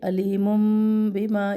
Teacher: عذاب علیم، پھر علیم، تنوین کے بعد با ہے، تو یہاں پر میم اقلاب کا قاعدہ ہے، آواز تنوین کی آواز میم میں بدل رہی ہے. علیم بما، یہ بھی 1 الف برابر کریں گے.